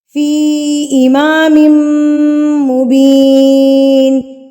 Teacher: تو اس مد کے بعد یہ والا اگر حمزہ آ جاتا ہے تو یہاں پر آپ کو کنفرم ہو جانا چاہیے کہ یہ مد منفصل یعنی کہ چھوٹی مد ہے. اس کو ہم نے 3 حرکات کے برابر کھینچنا ہے · میم مشدد، تو یہاں پر ہم غنہ کریں گے